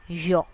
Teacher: Now notice that the beginning of this word has a little touch of the sound of J. So it is not completely yo, it is yo.